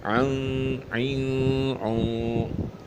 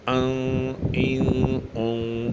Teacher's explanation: عین نرمی سے ادا ہوگا اور حمزہ سختی سے ادا ہوگا